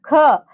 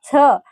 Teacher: ह हा व्यंजन ह उच्चार करत असताना फुफुसातील हवा तोंडावाटे जोराने बाहेर फेकली जाते म्हणून त्याला महाप्राण असे म्हणतात